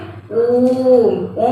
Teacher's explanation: जब हम कहते हैं ओम तो ऊ की ध्वनि को लंबा खींचते हैं। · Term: प्लुत स्वर